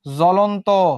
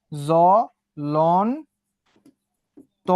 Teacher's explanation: জ্বলন্ত, তাহলে কি ব উচ্চারিত হবে? হবে না।